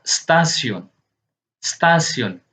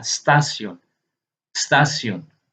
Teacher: vokal E yang pendek dan ringan muncul dengan sendirinya saat kita mengucapkan kata stasiun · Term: schwa bunyi